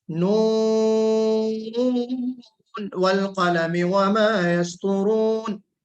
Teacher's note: हम इसको इजहार कर देते हैं, नून पे गुन्ना नहीं करते, इदगाम नहीं करते हम, बल्कि हम इसको इजहार करके पढ़ते हैं नून वल कलमी वमा यस्तुरून, इस तरह पढ़ते हैं।